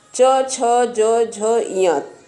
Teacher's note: च, छ, ज, झ, य तालु से बोला जाता है